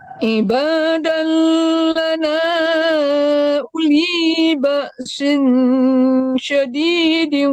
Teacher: u-nya nggak panjang ya, karena wawnya tidak mati. Jadi tidak panjangkan u-nya.